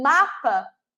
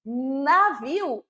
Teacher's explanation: quando eu falo mapa meus lábios se tocaram quando eu falo navio não se tocaram então é n não é m certo vejam aqui um aspecto